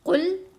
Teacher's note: قاف کو موٹا پڑھنا، لام کو باریک پڑھنا